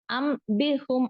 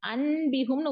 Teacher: நூனா உச்சரிக்க மாட்டோம் உச்சரிக்காம வந்து என்ன பண்ணுவோம் மீமோட உச்சரிப்பை கொடுப்போம்